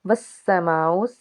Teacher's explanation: والسماء، سین جو ہے سین حرف صفیریہ کا حرف، جب اس کو ادا کریں گے تو سیٹی کی آواز آئے گی۔ اس کے بعد بڑی مد ہے، 5 الف کے برابر اس کو ہم کھینچ کے ادا کریں گے۔